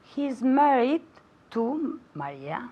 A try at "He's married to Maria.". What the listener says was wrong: Now, la S mosca en his, no la he oído. I didn't hear it.